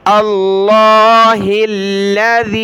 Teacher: اللہ موٹا پڑھنا ہے اور ہا کو لام کے ساتھ ملایا ، اللہ ہا پر زیر ہے، الذی، یہ سورہ ابراہیم کی